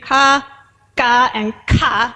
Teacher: there is a distinction between plain, tense, and aspirated consonants.